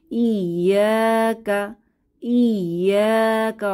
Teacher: এখানে ইয়াতে আলিফ মাদ এসেছে এক আলিফ টেনে পড়বো